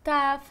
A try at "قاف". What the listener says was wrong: لا هذيك الكاف نتاع الكرة.